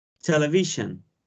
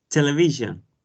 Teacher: And television has 4 syllables, and the stress is on the third syllable.